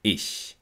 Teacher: Die Zungenspitze ist hinter den unteren Schneidezähnen. Der vordere Zungenrücken hebt sich zum harten Gaumen. Zwischen der Zunge und dem harten Gaumen entsteht so eine Enge, durch die die Luft nach außen entweicht. · Charakteristisch und wichtig ist dieses Reibegeräusch. Der Ich-Laut ist die stimmlose Variante des J-Lautes, J. Die Zungenspitze ist hinter den unteren Schneidezähnen. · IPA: /ç/